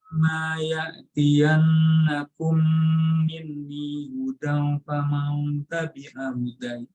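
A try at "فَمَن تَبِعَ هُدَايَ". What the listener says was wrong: Hudai itu danya panjang. Hudai, iya-nya yang bersukun kalau berhenti.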